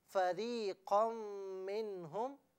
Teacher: فریقن میں جو را ہے اس سے را کو باریک پڑھے